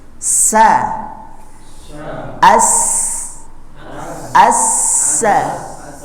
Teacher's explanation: bunyinya di sela-sela gigi bagian depan menabrak sela-sela gigi sehingga dia muncul sifat yang namanya saofir atau tipis sa sa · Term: Sin